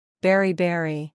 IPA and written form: ˈbɛr iˈbɛr i (Beriberi)